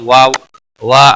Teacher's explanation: الف مدہ ہے ایک الف کے برابر کھینچ کر پڑھیں گے